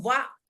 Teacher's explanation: वाइब जब भी बोलेंगे तो वाह, वो आपके दांत जो है आपके होठों पर छुएंगे ही छुएंगे